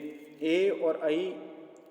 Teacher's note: एकार और ऐकार का उच्चारण स्थान कंठ तालु होता है। क्योंकि ये ए और ऐ जब स्वरों का भेद पड़ा था तो उसमें इसको 12 प्रकार का बतलाया गया था, क्योंकि इनका ह्रस्व नहीं होता है।